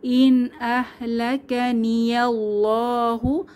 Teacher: নুন সাকিনের পরে আলিফের উপর জবর বা হামজা এসেছে, তাহলে এখানে ইজহার স্পষ্ট করে পড়তে হবে।